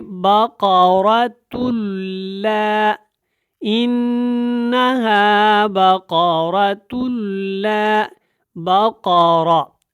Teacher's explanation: را بھی پر ہے اور قاف بھی پر ہے